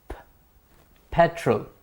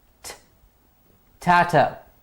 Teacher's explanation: These are made by the muscular expulsion of breath without the vocal cords being activated. Here the vocal cords are not activated, and so we get unvoiced consonants.